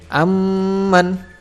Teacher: Pastinya huruf yang keduanya hidup. Maka cara membacanya adalah dibaca dengung sepanjang 2 harokat. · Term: idgham mimi